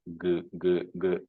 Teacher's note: So, but if you try to pronounce this, it will be G, G, G. So there is some buzzing sound involved. Some voicing is there.